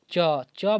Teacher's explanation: ऊपर जीभ सट रहा है दांत के सबसे ऊपर तो उसी को तालू बोलते हैं